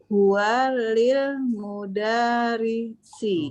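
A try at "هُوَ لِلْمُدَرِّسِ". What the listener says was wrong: Mudarrisi, benar ya. Lil mudarrisi. Ro-nya bertasydid, lil mudarrisi.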